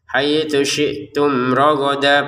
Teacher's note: Untuk rogodan kita baca rogoda kalau berhenti ya. Haitsu syi'tum rogoda, panjang 2 harokat.